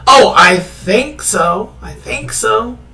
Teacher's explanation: in English, I think so, with a rising tone can mean certainty.